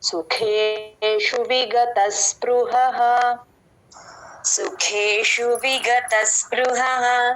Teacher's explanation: సుఖేషు ఖా మహాప్రాణం, విగత అసాని పట్టుకోవాలి, స్పృహ పాకి వట్రసుడి తేలిక చెప్పాలి